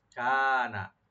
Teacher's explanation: কাফ টানবেন একালিফ, নুনে কোনো টান নাই